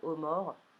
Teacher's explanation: Dans mort, par exemple, le O il est quand même atténué par le R qui le suit